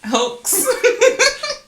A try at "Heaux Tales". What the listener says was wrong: The X is silent, though. The X is silent, dog. It's hotels. Like hoes, there's some moves and